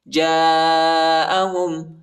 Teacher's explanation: جم کے بعد جو الف ہے اس کے اوپر بڑا مد ہے، اس کو تقریباً 3-4 سیکنڈ تک کھینچیں گے